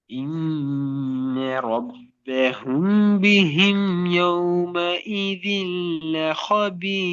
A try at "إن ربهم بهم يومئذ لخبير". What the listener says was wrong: வல்லினம் பெல எப்ப லஹபியோரண்டு வல்லினத்துக்கு நீங்க ஓதுறீங்க. எங்க மெல்லினம்? மெல்லினம்னு சரியா சொன்னீங்க. ஓத விட்டா வல்லினத்தை ஓதுறீங்க. தலைகீழா ஓதுறீங்களே.